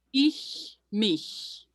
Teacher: an ich laut, you feel it kind of there on the forwardish middle part of your tongue. Ich, mich. And your tongue doesn't move.